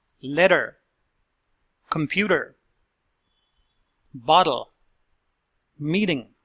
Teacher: the second sound of the letter T is like a fast D